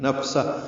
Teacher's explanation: فا ساکن اور ہا ساکن دونوں پہ ہمس ہے، نفسہ دونوں میں سانس جاری رہے گی، یہ وقفن ہے۔